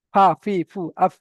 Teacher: নিচের ঠোটের ভিজা অংশ উপরের সামনের উপরের দুটি দাঁতের আগা লেগে ফাউচ যেমন আফাফিফু আফ নিচের ঠোটের ভিজে অংশে সামনের উপরের দুইটি ঠোটের দুইটি দাঁতের আগা লেগে ফা উচিত হয়। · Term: ফায়ের মাখরাজ